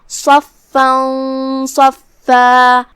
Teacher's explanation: صاد حروف التفخیم میں سے ہے تو ہم اسے بھاری آواز میں منہ پھلا کے ادا کریں گے جو کہ فا پہ تشدید ہے تو ہم 2 حرف کی مقدار میں فا کو پڑھیں گے اور اس پہ تنوین زبر ہے اور اس کے بعد حرف الصاد ہے کلمت صفا میں.